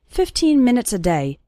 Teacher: the last two syllables of minutes become very small and just serve to connect with the word day